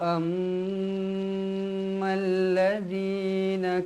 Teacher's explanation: huruf mim yang bersabdu mestilah wajib dibaca dengung dengan kadar dua harakat